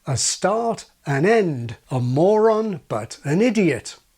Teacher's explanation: the n on the end of this form has the effect of keeping vowels apart